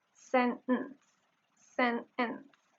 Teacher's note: the glottal stop is used instead of the | t | phoneme.